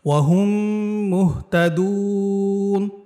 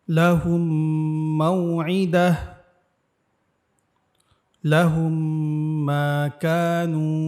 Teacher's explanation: মিম সাকিন ইকফার হরফ ছিল যেমন একটি বা এখানে মিম সাকিন ইদগামের হরফ একটি সেটি হচ্ছে মিম অর্থাৎ মিম সাকিনের পরে যদি মিম আসে তাহলে দ্বিতীয় মিমের তাসদিদ দিয়া উক্ত মিম সাকিনকে গুন্না সহ মিলায়া পড়তে হবে